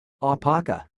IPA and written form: aʊˈpɑːkə (Aupaka)